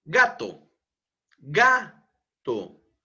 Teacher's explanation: la penúltima sílaba es la que lleva mayor entonación de voz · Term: palabras graves